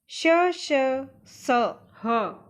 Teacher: इन वर्णों का उच्चारण करते समय मुख से ऊष्मा अर्थात गर्म हवा बाहर निकलती है। एक हल्की सी सीटी जैसी आवाज़ आती है। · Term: ऊष्म व्यंजन